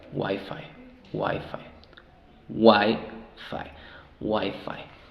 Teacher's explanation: Ahora, el acento, la sílaba tónica es en la primera.